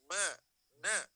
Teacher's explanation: nun dan mim sebelum ditasydidkan itu sudah mendengung. Apalagi ditasydidkan.